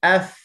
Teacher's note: dia hujung gigi atas diletakkan dengan bibir bawah yang basah kat dalam tu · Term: makhraj bagi huruf fa